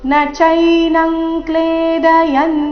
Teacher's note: ಅನುಸ್ವಾರದ ಉಚ್ಚಾರಣೆ ಕ ವರ್ಗದ ಅನುನಾಸಿಕದ ರೀತಿ